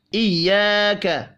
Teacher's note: الف مدہ ہے، 1 الف کے برابر کھینچ کر پڑھیں گے